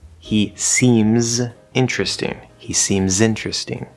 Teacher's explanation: a word for example seems starts with an s sound but that second s is a z sound